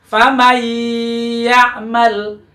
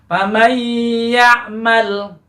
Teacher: disatukan nun dilebur menjadi satu dengan huruf ya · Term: idgham